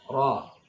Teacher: ra dibaca panjang dan ra-nya tafkhim tebal